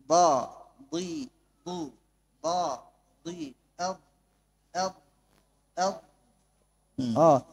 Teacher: Tahu kita di mana titiknya, di pinggir lisan. Jangan datangkan daripada ujung lisan, datangkan dari pinggir kanan ataupun pinggir kiri lisan. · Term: huruf dhad